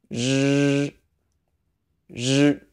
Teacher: The Chinese R is similar to this sound, but there are a few differences. First, pucker your lips. Your tongue is wider, and you're also buzzing your tongue against the front roof of your mouth and not your teeth.